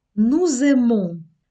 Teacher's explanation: Літера С, яка в кінці слів не має читатися за правилами французької мови, почала читатися. Чому? Саме під впливом того, що наступне слово емо починається з голосної. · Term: зв'язування